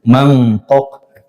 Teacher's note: Nun sukun bertemu qof. Itu dengungnya sempurna.